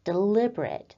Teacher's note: the word deliberate as an adjective where we have the emphasis on the second syllable